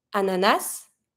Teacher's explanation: you're going to link the N with the a so you're going to be saying Nas